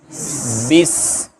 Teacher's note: اچھا، سین ادا ہوتی ہے جب اوپر والے دانت اور نیچے والے دانت آپس میں ملتے ہیں، اسی سے صاد، زا اور سین۔ اور اس کے اندر جو صفت ہوتی ہے صفیر، یعنی سیٹی کی طرح کی آواز آئے گی